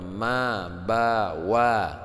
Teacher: makhraj syafawi yaitu keluarnya daripada ee dua bibir ya yaitu keluar Ma ba wa yang selanjutnya makhraj kisyum itu